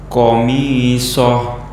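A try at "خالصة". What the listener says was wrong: Kurang nampak hak besarnya. Soh. Kemudian juga kita juga harus mengingat bahwa kita tuh berada di pertengahan. Artinya hak besarnya harus nampak. Tidak boleh tidak nampak. Kemudian tidak boleh juga berlebihan. Artinya hak besarnya ini dilafadzkan melalui dada.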